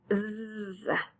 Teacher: zzz is a voice sound because the vocal cords are vibrating.